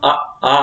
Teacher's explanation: हम आ बोलते हैं तो हमारे जो मुख है वो खुल जाता है, ठीक है। और क्या होता है, कंठ का प्रयोग होता है उसमें